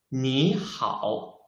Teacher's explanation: the first one is the third tone, right? The second one is also the third tone.